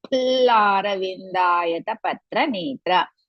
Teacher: La is Dirga, Ra Hrisva, Vi Hrisva.